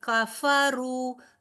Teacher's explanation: کاف اور فا تیزی سے ادا ہو کر، کاف بھی باریک فا بھی باریک